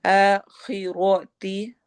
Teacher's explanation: खा और रा दोनों हैवी होंगे